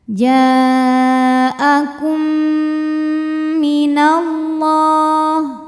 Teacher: Maka mim pertama dileburkan ke mim kedua, dimasukkan langsung kum disertai bunyi dengung M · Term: idgham mimi